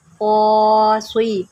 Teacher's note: قاف کو موٹا کریں، قاصی، اس کو سین نہیں صاد پڑھنا ہے